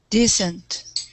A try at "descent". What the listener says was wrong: So we put the stress on the second syllable. So descent.